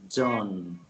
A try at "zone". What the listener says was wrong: It's not Joan, but zone.